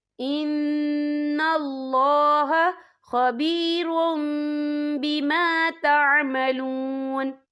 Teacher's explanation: وَاتَّقُوا اللَّهَ إِنَّ اللَّهَ خَبِيرٌ بِمَا تَعْمَلُونَ، یا دیکھیں خبیرم، را کے پر تنوین ہے، تنوین کے بعد جو ہے با آ رہا ہے، تو یہاں پر اقلاب ہوگا، یعنی تبدیلی ہوگی، تو ہم یہاں میم کا تلفظ کریں گے اور ہم یہاں غنہ بھی کریں گے